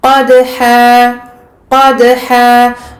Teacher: On lâche le makhraj du dal très rapidement. On ne retient pas, on n'appuie pas sur la lettre dal. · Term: qalqala